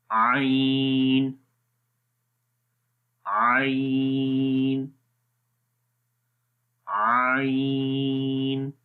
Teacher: عین کا مخرج گلے کے درمیان والے حصے سے پڑھا جاتا ہے، اور جو اس کا مخرج ہے یعنی کہ وسط حلق، اور اس امیج کے اندر آپ دیکھ سکتے ہیں کہ یہ وہ جگہ ہے جہاں سے عین پڑھا جاتا ہے۔